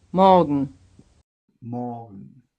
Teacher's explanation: notice that in the written form m-o-r-g-e-n there is an R it is not pronounced